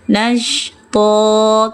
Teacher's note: Turunkan rahangnya, suaranya suara O. Angkat pangkal lidahnya ya biar tebal.